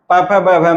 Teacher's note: ओष्ठ पर आघात होने के कारण प फ ब भ म की उत्पत्ति होती है। ये सभी वर्गीय व्यंजन स्वयं प्रकट होते हैं।